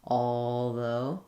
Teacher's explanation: You need to hear that kind of L coloring of the vowel, and that's a classic example of where I'm going to use that dark L, that I'm making the L sound more with the back of my tongue and the vowel.